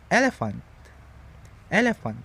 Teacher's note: we're putting a stress in the first syllable of the word but this time the word is three syllables